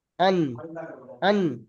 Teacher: জিহব্বার আগা এবং উপরের সামনের একটি ধারালো দাঁতে নিয়ে অন্য ধারালো দাঁতের গড়ার সাথে লাগিয়ে উচ্চারিত হয় নুন